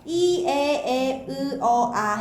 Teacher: 평순모음. 입술 모양이 평평해요. 평평하게 하면 돌출되지 않아서 공기의 흐름이 빨라지지 않습니다.